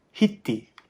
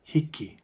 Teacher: if there is an I, a K, and an I, the middle K is sometimes pronounced as a T. So it's very common to hear kupuna on Maui say hiti instead of hiki.